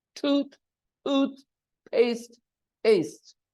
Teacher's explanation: there are only two vowel sounds tooth tooth paste paste and the stress is on the first syllable